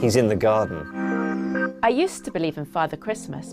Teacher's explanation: consonant sound and the next word begins in a vowel sound we link the two sounds together without a pause in between them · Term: catination